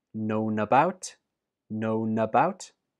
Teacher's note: the last sound in known is N that links to about, known about, known about.